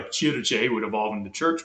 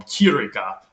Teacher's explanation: What I mean by palatalization is the K's became ch sounds before a front vowel